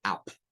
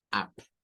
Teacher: el short sound para la U es una mezcla entre una A y una U y que se usa el símbolo del circunflejo, ¿verdad? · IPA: /ʌ/